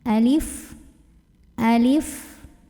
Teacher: Alif ini kita baca satu harokat aja ya.